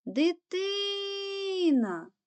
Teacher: гукаємо слово дитина другий склад є наголошеним а тепер робимо звуковий аналіз кожного звуку перший звук д приголосний